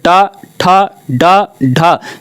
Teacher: जब बोल रहे हैं तो जीभ आपकी जाके पीछे से टकरा रही है, पीछे आपके ऊपर जाके टकरा रही है। जहां पर टकराती है इसको हम क्या कहते हैं, मूर्धा या मूर्धन्य।